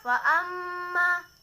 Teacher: kulat mawazinuh Hai disini ada bacaan ghunnah mim bertasydid Hai faama Nah itu dibaca ditekan dan ditahan dua harokat